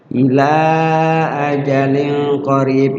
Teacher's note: Ajalin di situ ada kasrotain atau tanwin ketemu qaf, adalah ikhfa, ya, disamarkan tanwinnya.